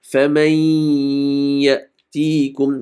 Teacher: total merger, and you read it with ghunna